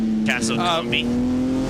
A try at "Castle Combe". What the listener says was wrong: It is Castle Combe. Combe. Don't say the B.